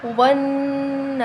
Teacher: من الجنتی والناس, نون مشدد پر وہ نہ کریں گے, الف مدہ کو ایک الف کے برابر لمبا کریں گے. سین سے وقف کی صورت میں ساکن ہو جائے گا